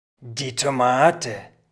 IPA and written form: diː toˈmaːtə (die Tomate)